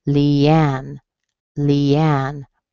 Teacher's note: you're going to have a secondary stress in the beginning and a primary stress at the end.